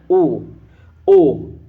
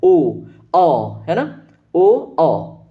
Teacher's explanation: ओ कंठ पे जोर पड़ रहा है और होठ आपके ट्विस्ट हो रहा है। ओ अ है ना, ओ अ है ना, तो ये किस कैसा है, कंठोष्ठ है।